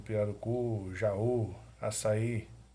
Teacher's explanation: a sílaba tônica mais forte é a última, são palavras oxítonas.